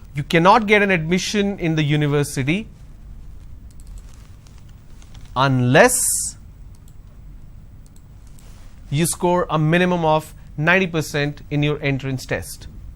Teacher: So unless is the word which should take the stress. So that's a sentence stress.